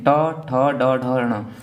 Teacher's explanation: तो ये मूर्धा से बोले जाते हैं। मूर्धा का मतलब है कि सबसे पहले जीभ हमारी ऊपर जाती है और फिर सीधी सी नीचे आके गिर जाती है